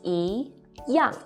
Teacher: 一 as in 一样. See, 样 is the fourth falling tone